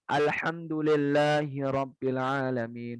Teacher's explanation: Huruf H-nya nggak kelihatan, kayak kesembunyi gitu. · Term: al-khofa